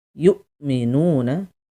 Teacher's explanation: Di sini ada hamzah sukun, ya, harus ditekan, ya, tanpa suara. Yu'minuna. Lalu nu ada mad tabi'i, baca dua harokat, satu ayunan.